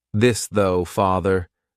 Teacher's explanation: Voiced means your vocal cords are going to vibrate. So, you're going to put your tongue in between your teeth and your vocal cords are going to vibrate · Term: voiced th